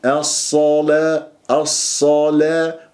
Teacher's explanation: الصاد المفخمه مرتبه ثانيه مفتوحه